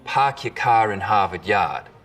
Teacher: The stereotypical Boston accents, of course, are non-rhotic, meaning no R sounds in park your car in Harvard Yard. · We call this the start vowel. In Boston, it's usually pretty fronted.